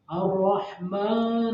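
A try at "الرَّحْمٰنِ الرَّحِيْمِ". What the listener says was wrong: Ar-Rah itu di tasdidnya.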